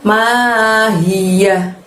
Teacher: Ma panjangnya 2, hi-nya dari tenggorokan bagian bawah, yahnya pendek berakhiran hak